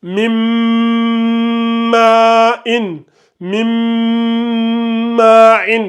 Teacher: quand le mim suit le nounou sakina, on fait le idram, on fait la fusion avec le nazima. Ici, au lieu de lire min ma'in, on va lire ça min ma'in, mais on va lire mim. · La runna, elle se fait pendant 3 secondes.